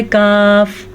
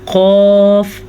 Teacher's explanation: اب جیسے کہ میں اس کو منہ کو گول نہیں کرتی تو نکلتا ہے کاف، اب میں منہ کو گول کر کے پڑھتی ہوں تو نکلتا ہے قاف۔